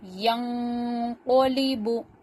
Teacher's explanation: کیونکہ میں نے دیکھا کہ نون ساکن کے بعد حروف اقفا میں سے قوف آیا ہے، اور قاعدہ ہے کہ ایک الف کی مقدار کے برابر نون کی آواز کو ناک میں ہائیڈ کر کے چھپا کر پڑھیں گے